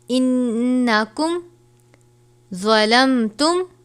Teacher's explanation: نون مشدد ہے، غنہ کر کے پڑھیں گے